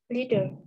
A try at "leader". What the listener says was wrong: Lee, not lead. Leader.